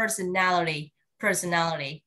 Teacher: Khi em đọc theo anh Mỹ thì chữ T á, nó được kẹp giữa hai cái nguyên âm, nó chuyển thành đờ.